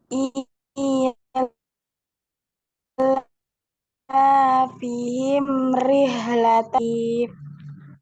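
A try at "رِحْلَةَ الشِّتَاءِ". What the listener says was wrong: Rihlata, jangan rihla, bukan ha ya, tapi ha. Rihla.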